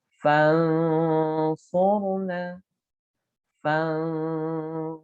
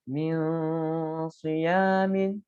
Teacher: Jadi setelah dengung, ditahan dulu.